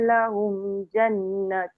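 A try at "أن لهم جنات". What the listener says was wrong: Satu, anna tu tak panjang. Na pendek. Kalau terhenti kat situ sebab nafas tadi. Jannat. Nampak tak dekat nun tu ada alif kecil kat atas tu. Bunyi. Tapi dia pendek. Maksud saya antara nun dengan ta tu dia kena panjang sebab mat kat atas tu alif.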